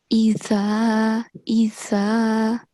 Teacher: zal, it has a hissing sound